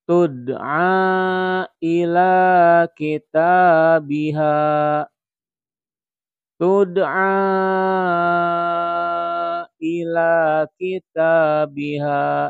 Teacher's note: dipanjangkan sampai dengan 5 harokat